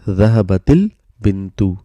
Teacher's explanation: So this sukoon turns into kasra. Sukoons turned into kasra, so that it's easy to pronounce.